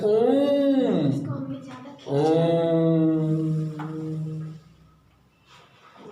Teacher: जिसका उच्चारण में 3 मात्रा का बोध होता है, तो वो जो है प्लुत कहलाते।